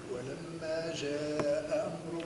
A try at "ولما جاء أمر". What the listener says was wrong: ما تمديش ولما جاء أمر